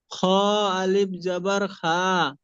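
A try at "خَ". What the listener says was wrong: খ, খা নয় খ, আলিফ জাবার খ।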